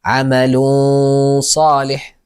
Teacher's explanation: تكون غنه مفخمه ولا نضع لسان في الحنك الاعلى يعني لا نلصق اللسان بالحنك العلى مثال الذال انذرتكم انذرتكم مثاله